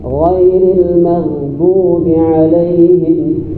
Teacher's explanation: karena sifatnya dia rahawah mengalir suara yang ada di huruf ghain. K apa caranya mengalir ghain ini muntung pada saat mengucapkan ma itu harus terbuka.